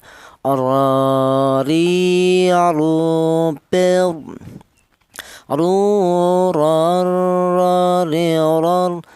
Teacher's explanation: Huruf ra ini keluarnya huruf berasal dari ujung lidah menyentuh langit-langit mulut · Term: huruf ro